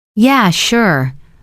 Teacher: Yeah, sure. Calm falling tone.